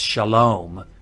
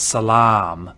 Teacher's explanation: Everything that is a holam vav used to be a long ah.